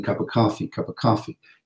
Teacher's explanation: we don't really have pause right between a consonant sound and a vowel sound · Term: linking